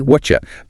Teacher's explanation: Hear the T sound at the end of what, and the Y sound at the start of you. Blend to make a chi sound like in chair. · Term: assimilation